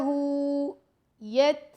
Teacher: یہاں پہ ہمس ہو رہا ہے تا پہ. یت، یہ جو آپ کو آواز آ رہی ہے اس کو ہمس کہتے ہیں.